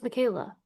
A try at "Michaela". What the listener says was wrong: No, in Germany we say Michaela. the English speaking only German speaking people like Austria, Switzerland, or Germany can pronounce my name correctly. In Italy, for example, they say Michaela, and in the US, an English-speaking person always saying Michaela because they cannot pronounce the sh correctly.